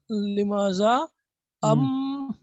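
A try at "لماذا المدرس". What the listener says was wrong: मैंने क्या बताया, कितनी मर्तबा बताया कि हमजा बीच में रहेगा तो प्रोनाउंस नहीं होगा, मिल जाएगा, लिमाजा अल नहीं होगा, लिमाजल मुदर्रिसु।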